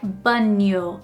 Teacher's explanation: non-native speakers would kind of add the sound of the letter i in between the n and the o. So, I hear that very often, like banho instead of banho.